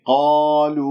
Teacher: ألف ساكن قبلها مفتوح، أسمع المد الطبيعي، أعطيه حركتين